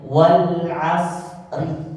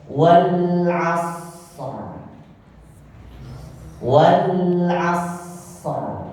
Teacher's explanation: maka dia huruf ro menjadi tebal karena kita sukunkan · kalau kita mau sukunkan, artinya kita mau waqaf, maka dia huruf ro menjadi tebal.